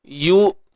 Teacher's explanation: Muncul bibir sebab ya ni baris depan